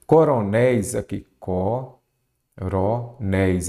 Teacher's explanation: aqui eu já tenho uma palavra oxítona, a sílaba forte é a última